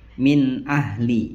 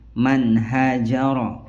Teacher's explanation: Jadi betul-betul nun sukun atau huruf bertanwinnya dibacanya jelas sekali. Nunnya terdengar jelas. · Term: idhar halqi